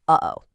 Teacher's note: It's where you briefly close your vocal cords to stop the airflow. It's the exact same sound you make right in the middle of uh-oh. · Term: glottal stop